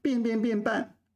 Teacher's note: So the only exception is hua ban de ban is pronounced differently. Then they're all fourth tone.